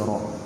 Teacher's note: Jangan ra ditebalkan pula. Ri. Nipis saja ra. Ra baris bawah nipis.